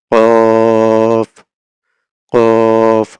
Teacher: কফ হচ্ছে জিহ্বার গোড়া তার বরাবর উপরের তালুর সঙ্গে লাগিয়ে